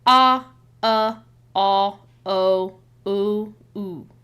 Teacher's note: your tongue goes back and your mouth starts to round as you go through these like different vowel sounds. So like ah, ah, o, ooh, ooh.